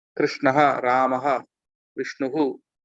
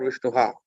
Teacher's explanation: the sound that comes before ha comes again after ha also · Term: visarga